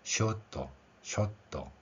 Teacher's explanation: 물론 영어 발음에서 영국식이냐 미국식이냐에 따라서 그 발음의 차이가 있을 수는 있습니다. 하지만 일반적으로 일본어는 이러한 R 발음을 받침으로 표기하는 원리가 없기 때문에 대부분의 경우 생략을 합니다. 그 결과로 나온 발음이 쇼토, 쇼토 이런 발음이 되는 것입니다.